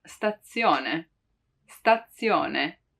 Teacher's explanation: when we pronounce actually the letter Z, it's often heard as a double one